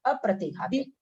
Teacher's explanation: संयुक्त अक्षर है तो अ पर जोर आएगा